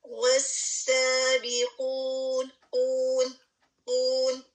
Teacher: یہاں پہ قاف جو ہے ہیوی ہے اور ہونٹوں کو گول کریں گے اور 2 حرکہ آپ اس کو کریں گے